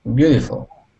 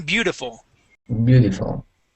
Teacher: you can change that T to a D and say beautiful.